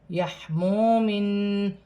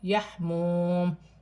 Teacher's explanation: وقف کی صورت میں دو زیر کی تنوین گر جائے گی اور میم ساکن ہو جائے گی۔ الف مدہ بن رہا ہے، یہاں پر بھی الف مدہ ہے، دو زیر کی تنوین کے بعد واو مشدد ہے، تنوین میں غنہ کیا جائے گا۔